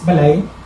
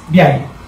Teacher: the thing that makes bantayan unique or at least interesting is that there is this Lateral palatal correspondence or alternation